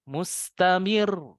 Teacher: Naik nadanya. Jangan datar atau malah tambah turun. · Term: nabr